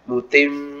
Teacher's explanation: Ya, mutim jadi gunnahnya masih ada ya. Jadi tidak sekedar mutim tapi ada gunnahnya dengan kadar 2 harokat.